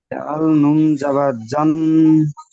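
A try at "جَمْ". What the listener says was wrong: জান নয় জাম, মিম উচ্চারণ হবে।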